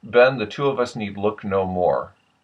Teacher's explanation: there is a resonance that's sort of in the nasal cavity, if you can see that dotted line there, and then it goes down, and there's kind of a muscular restriction, from what I can tell, in the cheeks.